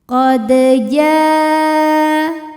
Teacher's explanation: Sebab dal sukunnya asli dan ada di tengah bacaan, maka kita baca dengan pantulan yang kecil. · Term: qalqalah sughra